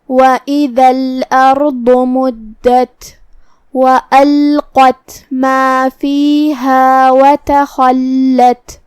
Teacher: لام پہ جزم ہے تو ہم لام کو جزم سے ادا کریں گے اور لام کو ظاہر کرتے ہوئے یہ کلمہ کو ادا کریں گے۔ قاف کو ہم تفخیم سے ادا کریں گے اور اسے زبان کی جڑ اور تالو کے نرم حصے سے ادا کریں گے۔ آخر میں ہم حرف تا کو پڑھیں گے تو اسے ہمزے سے ادا کریں گے۔